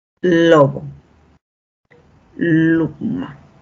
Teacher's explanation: Luego tenemos las alveolares. El punto de articulación se va a dar entre la lengua y justamente los alvéolos al producir la L.